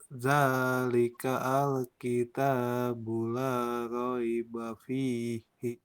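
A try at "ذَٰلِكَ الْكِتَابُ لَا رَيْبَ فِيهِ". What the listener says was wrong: K-nya dengan al itu nyambung. Nah, zalikal jadinya ya.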